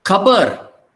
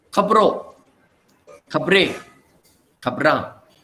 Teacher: In the plural, second vowel gets dropped.